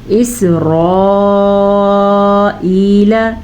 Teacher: اسرائیل را کو پر پڑھنا ہے، حمزہ کو نرمی سے پڑھنا ہے کیونکہ یہ حمزہ ہے عین نہیں. یا مدہ کو کھینچ کے پڑھنا ہے.